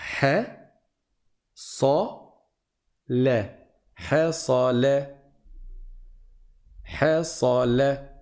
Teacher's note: on a un ha qui est aminci. On a un sad qui est grave. On dit sa, donc a, pas e. Et on a un lem qui est aminci.